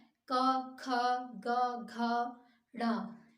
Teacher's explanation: कंठ वर्ग के वर्ड कहलाते हैं जैसे क तो प्रेशर मतलब जो कंठ है आपका गला है इस पर जोर पड़ता है